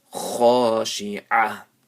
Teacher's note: So this ha and this kha are maddul asli, one alif each. You stretch it one alif each.